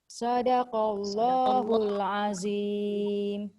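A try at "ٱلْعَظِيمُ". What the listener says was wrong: Azim tu hujung lidah kena keluarkan. Kalau tak dia tak jadi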